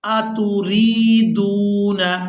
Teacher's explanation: را کو یائے مدہ کی وجہ سے، دال کو واو مدہ کی وجہ سے کھینچ کر ادا کرنا ہے